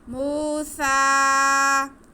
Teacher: میم پہ پیش اور واو ساکن، تو یہ بھی واو مدہ ہو گیا۔ اس کو بھی ہم ایک الف کے برابر کھینچیں گے۔